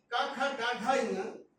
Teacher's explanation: मैं कहना ये चाहता हूँ, पहला अक्षर जो होता है किसी वर्ण, आपने 5 वर्ग देखे, क ख ग घ ङ, इसका एक वर्ग है, इसको कंठ से बोला जाता है, इन्हें कंठम्बी या कंठी कहा जाता है।